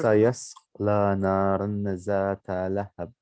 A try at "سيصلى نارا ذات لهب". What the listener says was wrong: Sayasla is the start. Sayasla naran dhata. You know, it's not a za. Do you know za is this?